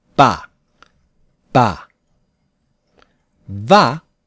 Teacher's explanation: in Japanese bah usually uses two lips